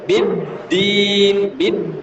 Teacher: Di tidak boleh dengung ya. Di itu tidak boleh dengung. Di biasa dagunya ke bawah.